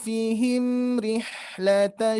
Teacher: tidak diberhentikan huruf mim itu dia mengalir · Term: mim sukun